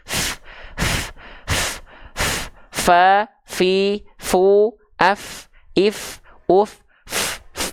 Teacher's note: dia hams itu artinya mengalirkan hembusan angin atau udara dari mulut